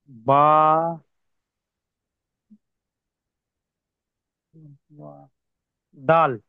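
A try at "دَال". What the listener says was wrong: ডাল টান দেন ভাই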